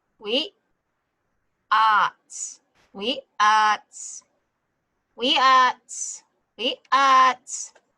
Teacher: The W-I is we. The glottal stop is where the air just stops right in your throat. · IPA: wiʔaac